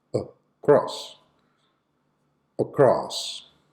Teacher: the schwa sound should be present on the first syllable